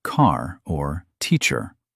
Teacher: In most parts of the United States, we pronounce the R at the end of words like car or teacher. In many parts of England, they do not.